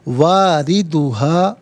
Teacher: रॉ के नीचे ज़ेर है, रॉ को बारीक करके पढ़ा जाएगा